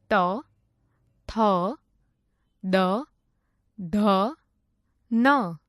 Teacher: જે વર્ણોનું ઉચ્ચારણ કરવા માટે જીભ વડે ઉપલા દાંતોને સ્પર્શ કરવું પડે તે વર્ણોને દંત્ય વર્ણો કહે છે